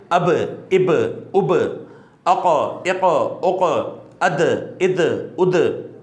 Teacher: جہاں پہ بھی یہ ساکن ہوں گے خوب جماؤ کے ساتھ یہاں پہ قلقلہ کیا جائے گا